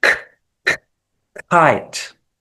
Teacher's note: in English, a K and a KH would be pronounced the same, both with air. So hence the G is more appropriate.